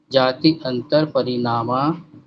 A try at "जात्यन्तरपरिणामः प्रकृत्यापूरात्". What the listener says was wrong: अरे जाति नहीं है जी, देखिए तो इसमें कहाँ जाति दिख रही है आपको? जाति अंतर, यंतर, जाति